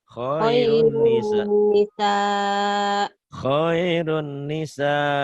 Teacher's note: nun mati atau tanwin saat bertemu dengan nun dan mim, idgham bi gunnah. Dimasukkan, diidghamkan, disertai dengan dengung.